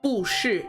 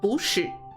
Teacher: When it's fourth tone plus fourth tone, the preceding fourth tone, as in this example, bu, will now become a second tone. So you wouldn't say 不是, it would be 不是.